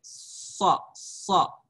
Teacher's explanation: Kemudian artinya begini, huruf safir yang ghairu mutawaddah membunyikan hurufnya itu seperti ada desis antara dua bibir